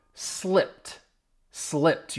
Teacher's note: You hear me emphasizing that t which is the ed d sound. The ed d in slipped because it's the p is voiceless.